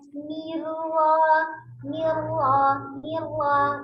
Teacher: sifat huruf ro sendiri adalah tawasut atau bainah mengalir sebagian